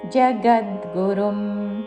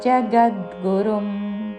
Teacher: గా మీద ఆఘాతతో జగద్గురుం